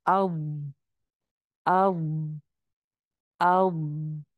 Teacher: آواز چل بھی رہی ہے، آواز موٹی بھی ہے، آواز بھری ہوئی بھی ہے، اور مجھے فیل ہو رہا ہے کہ ہاں استطالت ہے کہ پیچھے سے شروع کر کر آگے تک لے کر آنا پڑ رہا ہے اس کو.